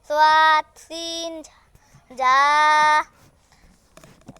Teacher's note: ১২ নম্বর মাখরাজ, জিহ্বার আগা সামনের উপরের ২ দাঁতের দিক লাগাইয়া